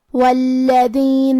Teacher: کلمت والذین میں حرف اللام پہ تشدید ہے، لہذا ہم 2 حرف کے برابر لام کو پڑھیں گے، کیونکہ تشدید کی اصلیت 2 حرف ہے. · کلمت ہم کے آخری میں میم ساکن ہے، پھر حرف اللام ہے. لام حروف الاظہار الشفوی میں سے ہے تو ہم میم ساکن کو ظاہر کریں گے